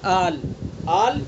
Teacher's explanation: الف کو کھینچتے ہوئے، یعنی جو الف حرف مدہ ہے اس کی آواز کو کھینچتے ہوئے لام میں ملا دیں گے. لام کے اوپر جو سکون ہے یہ سکون اصلی ہے. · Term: مد لازم کلمی مخفف